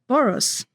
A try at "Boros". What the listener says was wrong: So in Hungarian, the S is pronounced as like SH, so it's Boros, not Boros.